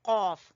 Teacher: कौफ को जुबान की जड़ से अदा करना है आपने